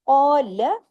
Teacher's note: قا 2 حرکات کھینچا، لام زبر لا 1 حرکت ہے، لام کو لمبا نہیں کرنا، لام 1 حرکت ہے.